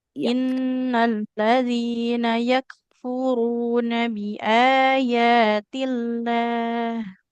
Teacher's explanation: huruf kafnya lebih mengalir yak nafasnya